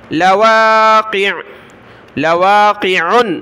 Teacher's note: انما توعدون لصادق وان الدین، وَإِنَّ حمزہ کو نون کے ساتھ، نون کو دال کے ساتھ ملایا، وَإِنَّ الدِّينَ لَوَاقِعٌ، یہاں بھی جیسے لصادق، یہاں بھی لام کو نہیں کھینچنا، واو کو کھینچنا ہے، واو کے ساتھ الف ہے. لواقع، لواقع، جب رکے تو لواقع.